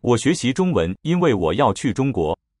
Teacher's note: 因为, first tone, second tone, okay, that's how I hear it.